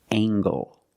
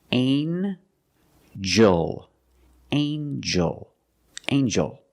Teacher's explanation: In this word, the G makes a j sound, like jump and juice. Together with the N, a regular N sound, not the nasal but the regular N.